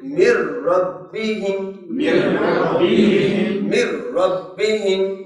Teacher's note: را، تو ہم نون نہیں پڑھیں گے، اس کو یوں پڑھیں گے مر ربہم، مر ربہم. یہاں نون کی آواز نہیں پڑھی جائے گی اور را کی آواز پڑھی جائے گی، یعنی ادغام ہو جائے گا